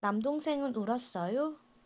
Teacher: you don't need to do anything special other than raise the intonation at the end of the sentence.